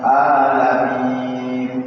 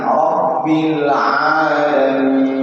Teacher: Yang benar adalah ain, Rabbil Alamin. Di mana tempat keluarnya ain itu berada di tengah-tengah tenggorokan, tenggorokan bagian tengah